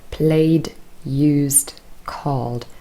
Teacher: all of those verbs end in a voiced sound in their infinitive form and that means your vocal cords are vibrating so we keep them on and therefore the sound we say is d because d is also voiced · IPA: /d/